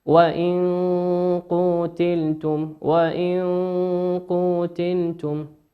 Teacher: نون ساكنة أتى بعدها حرف القاف، والقاف من حروف الإخفاء. كيف تقرأ؟ وإن قتلتم.